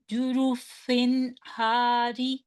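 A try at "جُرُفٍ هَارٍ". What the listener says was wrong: یا تنوین ہے ٹھیک ہے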